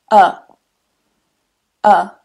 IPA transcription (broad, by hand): ʌ